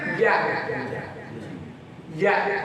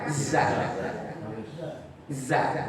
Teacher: kalau jin itu makhrajnya tengahnya lidah angkat bukan ujung